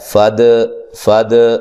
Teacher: یہ دال حروف قلقلہ میں سے ہے دال, اور اس کو ہم نے ہلایا ہے. فد فد, اس کو فد نہیں کرنا, فد نہیں, فد.